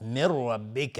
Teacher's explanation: من ربک نون ساکن بعدش را ادغام بدون غنه و را حکم استعلا داره، حکمش استعلاست چون فتحه داره